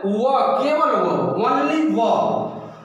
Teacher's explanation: व का उच्चारण स्थान दंत और ओष्ठ होता है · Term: दंतोष्ठ